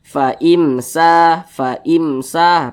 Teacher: karena dia izhar maka dibaca jelas tidak berdengung baca pendek saja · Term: izhar syafawi